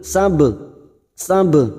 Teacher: huruf ba huruf Qalqalah pada saat disukun yaitu memantul